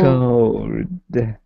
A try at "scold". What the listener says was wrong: So it's literally cold with an S at the beginning. So think cold. Cold. Just S cold. Cold. Scold.